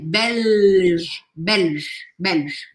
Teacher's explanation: esse L ele é bem marcadinho eu não posso falar Bel engolindo L eu tenho que marcar